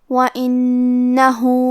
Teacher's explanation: حرف الہا پہ الٹا پیش ہے، یہاں حکم ہے مد صلہ صغرا. ہم اپنی آواز 2 مد کے برابر لمبی کریں گے · کلمت وَإِنَّهُ میں حرف النون پہ تشدید ہے، لہذا ہم حرف النون کو 2 حرف کے برابر پڑھیں گے کیونکہ تشدید کی اصلیت 2 حرف ہے.